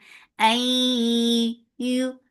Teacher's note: Ya is light for dhamma circle lips. The sound is short.